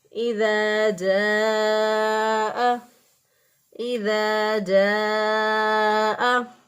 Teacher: اب جیم کا جو مخرج ہے وہ یہ ہے کہ زبان کا سینٹر، وسط جو ہے زبان کا درمیان جو ہے اٹھا کر اوپر کے تالوں کے ساتھ لگائیں گے تو جیم ادا ہوگا